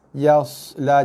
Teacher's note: Dia harus bunyi sedikit desiran pada huruf sod yang berbaris mati.